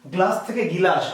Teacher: গ্লাস থেকে গিলাস, আমরা বলেছিলাম যে স্বর বেড়েছে, ইকারটি বেড়েছে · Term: স্বরগম